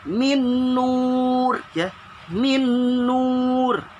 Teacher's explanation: Di situ apa ketemu apa? Di situ ada nun sukun ketemu nun, ya, didengungkan, ya, didengungkan.